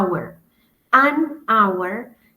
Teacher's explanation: Por ejemplo, la palabra hour, hora. Hour es un sonido vocálico, porque yo no pronuncio la H, es invisible, entonces suena como si fuera una O, una A. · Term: sonido invisible